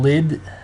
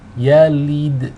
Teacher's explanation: the lam here takes a kasra. We want the e sound, not the ih sound.